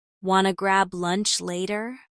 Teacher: The want to becomes wanna and grab lunch flows together smoothly.